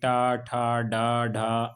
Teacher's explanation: ऐसे व्यंजन जिनके उच्चारण में हमारे मुख के अंतर्गत मूर्धा का प्रयोग होता है या जिनके उच्चारण में हमारी जिहुआ मूर्धा को स्पर्श करती है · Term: मूर्धन्य व्यंजन